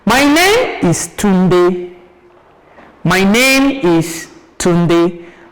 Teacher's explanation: my name is Tunde is a statement, and it must end with a what? A falling tone. My name is Tunde with a full stop.